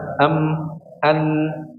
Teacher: jadi mengalirnya sebagian suara itu dari rongga hidung atau Pangkal hidung